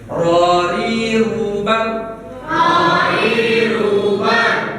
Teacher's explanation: Karena huruf ro ini ada sebutan dalam sifat hurufnya, yaitu takrir. Takrir itu bagian ujung lidah bergetar